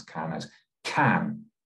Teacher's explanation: stress the word can then the vowel sound in the middle sounds like ah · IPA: /kæn/